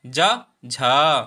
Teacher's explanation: झा को बोलने में हमें ज्यादा वायु लगती है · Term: महाप्राण